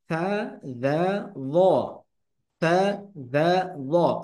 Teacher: জিহ্বার আগা উপরের দাঁতের আগার সাথে লাগিয়ে উচ্চারিত হয়